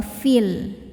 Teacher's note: Dibacanya panjang jika berhenti. Tapi jika diteruskan, fi-nya dibaca pendek, ya-nya gugur. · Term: takhallus bil hadzfi